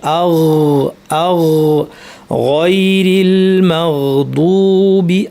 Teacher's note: এখান থেকে গয়ন, জিহ্বার গোড়াটা গিয়ে এখানে লাগবে, লেগে গইন উচ্চারণ হবে, গইনে বাতাস বন্ধ থাকবে কিন্তু আওয়াজ জারি থাকবে।